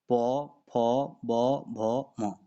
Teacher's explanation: प फ बोलते हैं तो उसमें ओष्ठ जो है चिपकता है